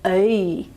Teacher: up towards the e okay and that's to show you that the e vowel is coming from the center of the vowel space and it's actually got some movement in it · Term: on glide